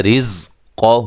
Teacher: را کو باریک پڑھنا ہے، قاف کو موٹا ادا کرنا ہے